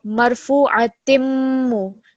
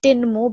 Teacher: When you join it, it's going to take a meme sound. So the noon sound which comes from the kasratain, it's going to be replaced with a meme sound